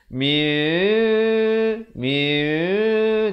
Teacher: Mim itu hampir bersentuhan saja bibirnya. Mim yang nipis. Miu, miu. Tengok bibir saya.